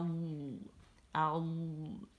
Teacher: इसमें इस्तितालत है, तो ज़बान जो है पीछे से आगे की तरफ चलती है, ठीक है। जब हम इसे साकिन के साथ अदा करते हैं तो फिर आवाज़ आऊ आऊ, ठीक है।